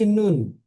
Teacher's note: নুন এই অক্ষরটি কিন্তু তিন আলিফ টান আমি পড়ছি